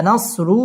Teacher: র পুর হবে মোটা করে পড়তে হবে